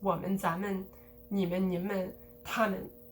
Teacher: One thing you'll note is that 们 in the plural pronouns, 我们,咱们,你们,你们,他们, that's always de-stressed, always. And then for the other characters, you can definitely de-stress them, and often they are de-stressed.